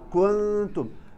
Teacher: التاء ظهورها أكثر من النون